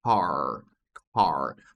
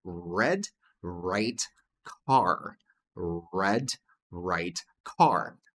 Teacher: Nota que todos eles esse R aqui, ó, tá na garganta.